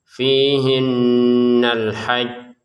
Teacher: yang pertama yang perlu ditekankan adalah ditekan dulu jimnya alhaj kemudian dipantulkan